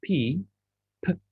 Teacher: there is something there's a movement but there is no vibration so that means the sound is unvoiced